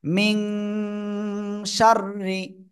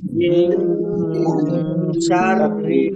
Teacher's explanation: নাকের ভিতরে নিয়ে গুণ হবে অনেকটা কি হবে এই অনুস্বারের মত গুণ্য হবে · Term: গুন্না